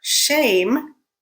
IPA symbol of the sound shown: ʃ